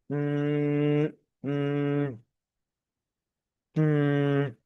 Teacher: Nah, adanya idgham yang melibatkan huruf nun ini memang selain diucapkan dengan lidah, ternyata huruf nun ini menggetarkan dalam pengucapan huruf nun ini ya, ternyata rongga hidung itu bergetar, gitu ya. Makanya disebutnya huruf khoisum di sini, atau huruf yang mendengung, atau huruf yang istilahnya apa ya, bindeng kalau kata orang Jawa mungkin ya.